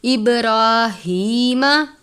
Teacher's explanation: ہاں کے نیچے کھڑی زیر ہے، یہ گول والی ہاں ہے، سینے کے بیچ یا حلق کے آخر سے ادا کرتے ہیں بھاری آواز کے ساتھ